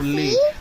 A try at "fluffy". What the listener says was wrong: Why you tell again fully? It's fluffy, baby.